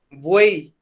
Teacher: Es una combinación de 3 vocales que forman una sola sílaba. 3 vocales en una misma sílaba, donde la vocal abierta está en el medio entre 2 vocales cerradas. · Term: triptongos